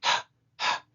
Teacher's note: the letter HEY is an aspirate, its pronunciation is a breath - a mere exhale